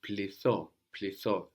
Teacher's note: we have the th there, deleting the n, but the vowel changes a little bit too